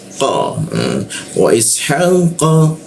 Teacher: sehingga tidak ada hembusan udara ketika mau membaca qo